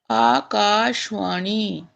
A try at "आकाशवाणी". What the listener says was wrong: सा में आ है। आ है। आकाशवाणी हिंदी इत्यादि में बोला जा रहा है, और उसी का दुष्प्रभाव है कि संस्कृत में भी आकाशवाणी बोल रहे हैं, जबकि शा में आ है। उसका लोप